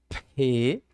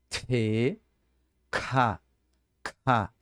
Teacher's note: tem que ser um som, primeiramente com a explosão, tá? O p, o t e o k alemão. Se você mexer a folha falando essas letras, então tá correto.